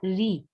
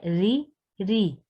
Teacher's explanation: ری بہت باریک سا ہوگا یہاں پہ، را موٹا نہیں ہوگا